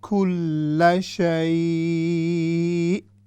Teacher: سو عین کے جو مخرج ہے وہاں پر جا کر ربنا وسعت کل، کل، آپ دیکھیں یہاں پر میں لام پر ایمفسائز کر رہا ہوں، وہ اس لیے کہ لام مشدد ہے۔ جب لام پر شد آئے گی تو ہم اس پر تھوڑا سا سکون کی بنسبت جو شد ہوتی ہے اس کو ہم تھوڑا سا زیادہ دباتے ہیں، اس پر ایمفسائز کرتے ہیں، تو اسی لیے ہم اس کو اس طرح پڑھ رہے ہیں کل شیء۔